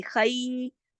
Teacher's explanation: خی، یہ دیکھیے اس میں خی جو ہے یہ یائلین ہے، اس کی آواز اردو کے لفظ کئی اور کئی سے ملتی ہے. خا موٹا پڑھا جائے گا اور یائلین پڑھی جائے گی